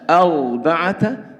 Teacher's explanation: Untuk ro-nya yaitu diucapkan dengan tebal yang bibirnya membentuk hayatul dhom, yaitu seperti lingkaran monyong ke depan, tapi bukan monyong ke depan ya, hayatul dhom, membentuk seperti lingkaran.